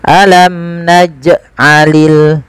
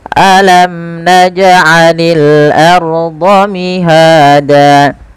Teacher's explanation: pantulkan jim ketika ia berharokat sukun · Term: qalqalah